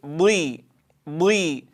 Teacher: الضاد حرف مستعل مطبق، وبالتالي يكون أشد تفخيما من الحرف المستعل المنفتح